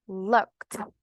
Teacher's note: Ya agregamos el ed, siguiendo las reglas gramaticales, ¿verdad? Va a sonar como una t.